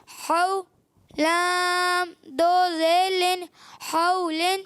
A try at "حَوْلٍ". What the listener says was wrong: اچھا آپ لام پڑھتے ہیں؟ لام پڑھتے ہیں، لام نہیں پڑھنا. لام زیادہ ناک میں آواز نہیں ہے. لام آخر میں میم میں جائے گی صرف. حا واو زبر حو لام دو زیر لن.